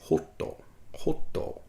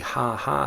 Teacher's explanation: I'm saying like ho, like an H-O sound, instead of the ha-ha sound that we would have in regular American English